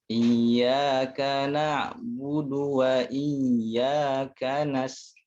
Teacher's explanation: tipiskan huruf du ya, karena huruf dal itu huruf tipis, huruf istifal.